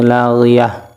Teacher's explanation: یہ تا کو ہا بنا دیں گے